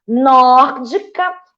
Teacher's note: eu tenho a antepenúltima sílaba tônica. Proparoxítona.